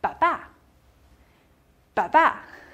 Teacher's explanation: 它不是汉语拼音的二声，它是西班牙语的重读符号。它像一个小帽子一样，只戴在元音的头上。它戴在哪个元音的头上，哪个元音重读，就是这样子的。 所以这个单词的重读音节是最后一个音节